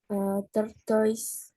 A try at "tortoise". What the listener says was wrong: Ya, ini cara bacanya apa? Bukan tortoise, walaupun tulisannya tortoise. Cara bacanya tordas.